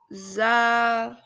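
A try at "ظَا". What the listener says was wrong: Zo, a little bit heavy.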